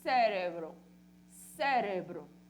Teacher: Cérebro, a sílaba tônica aqui. No espanhol, cérebro, cérebro. O som mais forte é o re.